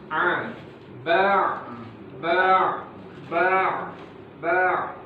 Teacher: Tidak ada ya aliran udara yang keluar. Dia termasuk pada sifat jahar.